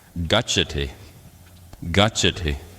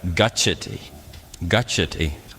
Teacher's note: Now, as I explained last week, in Pali, the letter C, even on its own, is pronounced like the English CH, as in church. And then when you have in Pali CH, it's that same pronunciation, but with a little puff of air.